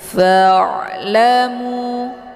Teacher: cara baca ain ini adalah dialirkan karena dia ada sifatnya tawas · ain ini bukan bacaan yang mesti ditekan tapi dialirkan